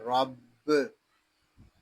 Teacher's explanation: را با زبر رب، یہاں را کے اوپر زبر ہے، را کو پر پڑھیں گے، با مشدد ہے، اس میں جماؤ کریں گے، اس کو رب ایسے نہیں پڑھیں گے، اس کو پڑھیں گے رب۔